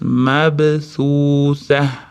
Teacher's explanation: Mabthutha b da qalqala kelyapti, s da til bosamiz. Mabthutha sdan keyingi vomatni ham cho'zamiz.